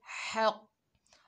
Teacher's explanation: हा जो है हलक के दरमियान से अदा करेंगे, हक। और कौफ जो है ये हरूफ इस्ताला में से है, मोटा पढ़ा जाएगा, हक।